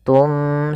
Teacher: Kita balikkan suara nunnya menjadi suara mim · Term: iqlab